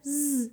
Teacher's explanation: Feel that buzzing? That's caused by the vibration of your vocal folds.